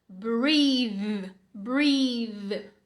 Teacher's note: Breathe com o TH vozeado.